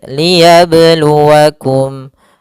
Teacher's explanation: Kemudian di sini pada huruf ba sukun ada namanya bacaan qalqalah, yaitu bacaan yang memantul.